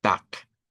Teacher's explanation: cuando está al final de una palabra o de una sílaba, se reemplace la consonante vibrante por su contraparte no vibrante. Y de ahí es donde decimos tac.